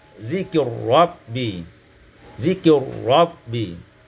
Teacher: Pada ayat 32, zikri rabbi, kita baca idghamul ra fir ra, diidghamkan ra pada ra sehingga kita membacanya zikir rabbi.